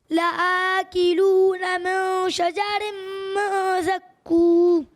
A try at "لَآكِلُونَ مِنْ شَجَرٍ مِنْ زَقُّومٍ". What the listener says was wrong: اچھی کوشش کی آپ نے، لیکن بیٹا اب پڑھیں شجرم. را اور ڑا میں فرق ہوتا ہے. اردو میں ڑے ہوتا ہے، عربی میں ڑے نہیں ہوتا. اور بھی جو ہے وہ آپ غنہ کی مقدار پوری کریں.